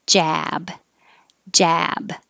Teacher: the vowel is ah so the jaw is open but the lips are back